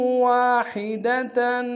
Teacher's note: ہا گہرائی سے ادا کریں گے، واحدن کی تنوین میں غنہ کریں گے، اور وقت صورت میں تا کو ہا سے بدلیں گے۔